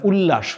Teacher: ত দ এর পর ল থাকলে ত দ এর জায়গাতে ল উচ্চারিত হয় যেমন ত আর ল এটা মিলে কি ল এ ল হয়ে